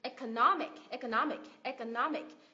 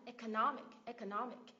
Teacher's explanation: cái từ này kết thúc bằng âm IC đúng không mình nhấn tiết ngay trước đó